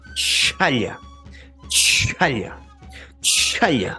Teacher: Veamos ahora la che con una H adicional, que es la oclusiva aspirada. · Que el aire tiene que salir libremente y tiene que salir de esta manera. Es la che, pero con cierta aspiración adicional. Por eso vamos a decir que viene a ser una oclusiva aspirada.